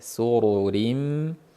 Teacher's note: Ala sururim mawdunah. Hop, bu joyda sin ingichka, suru yo'g'on, keyingi ri ingichka